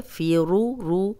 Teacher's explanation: रॉ पे ज़बर या पेशो रा भी मोटी होती है।